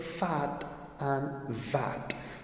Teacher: these are sounds formed with the upper teeth and lower lip the initial sounds of the word fat and vat · Your lips also and your teeth also. So these are sounds formed with the upper teeth and lower lip. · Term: labiodental